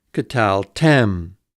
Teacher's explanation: In this case, then, tal is a closed, unaccented syllable, which must be short. K is an open pretonic, which by rule generally reduces to schwa.